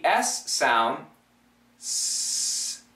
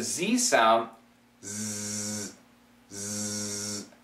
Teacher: the tongue placement for the S and the Z are the same the difference is is the vibration of the throat